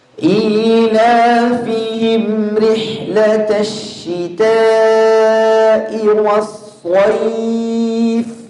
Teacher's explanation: Tash rih tipiskan rihnya, ra kasrah tipiskan.